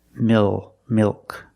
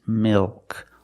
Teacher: also a dark L mil milk it's not milk it's milk the tongue gets fatter at the bottom it expands and it goes up a little bit in the back